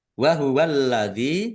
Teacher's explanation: lamnya ada tasdidnya dibaca dobel, ditahan dan ditekan dan ditahan biar tampak dobel. Dal kasroh ya sukun mad thobi'i panjang dua harakat.